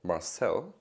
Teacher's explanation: my first name has the pronunciation on the second vowel